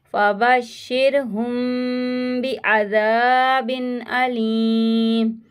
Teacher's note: यहाँ पे इक़फ़ा शफ़वी का गुन्ना करेंगे